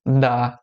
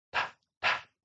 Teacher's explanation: a diferença entre o T e o D é que o D você tem a vibração das cordas vocais e o som do T você não tem vibração, como em dá e tá.